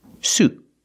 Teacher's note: Stop the air with your tongue and make a stop T.